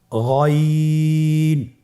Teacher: গইন হরফটি উচ্চারিত হয় কণ্ঠনালীর শেষ ভাগ হতে।